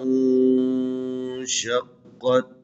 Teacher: میں جو نون دیا ہوا ہے یہاں پر اخفا کرنا ہے۔ اخفا یعنی نون کی آواز کو ناک میں لے کے جانا ہے، مخفی کرنا ہے